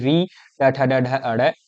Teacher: ये सभी मूर्धा से बोले जाते हैं। यानी ऋ ट ठ ड ढ ण ट वर्ग आता है।